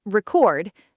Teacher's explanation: Stress on the second syllable, so that's the verb form